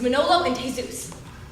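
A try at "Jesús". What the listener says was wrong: Don't pronounce the J.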